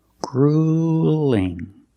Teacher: the uel we don't say UL it's not grueling it's grueling use the long u plus the light L